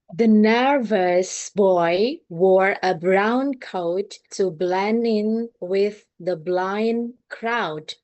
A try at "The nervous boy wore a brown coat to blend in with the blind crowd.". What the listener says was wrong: Bagus banget, bagus banget. I like it so much.